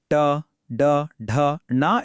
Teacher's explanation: ಟ ಡ ಢ ಣ ಎಂಬ ಅಕ್ಷರಗಳನ್ನ ಉಚ್ಚರಿಸುವಾಗ ನಾಲಿಗೆಯನ್ನ ಮಡಚಬೇಕಾಗುತ್ತದೆ. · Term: ಮೂರ್ಧನ್ಯ ಅಕ್ಷರಗಳೇ